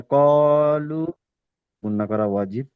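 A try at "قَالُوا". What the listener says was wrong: হুম, কলু। লু টান দিতে হবে, লু আবার মাদ আছে। লুর আবার মাদ আছে।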